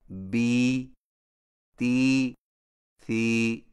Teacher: یائے مدہ ہونٹوں کو نیچے کی طرف کھول کر بقدر ایک الف کھینچ کر پڑھا جاتا ہے اور اس کی آواز کا رخ نیچے کی طرف ہوتا ہے، جیسے بی، تی، سی.